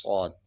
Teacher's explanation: جب صاد پڑھیں گے تو موٹا بھی پڑھیں گے، اور صاد کے اوپر مد ہے، 5 سیکنڈ کھینچ کے بھی پڑھیں گے